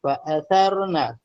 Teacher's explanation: Pada sebutan huruf sa, cuba keluarkan lidah sebab ada 3 tempat keluar huruf yang keluar melalui keluar lidah, iaitu huruf sa, huruf za, huruf dha.